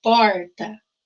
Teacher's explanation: Aqui nós temos esse R retroflexo, que é puxado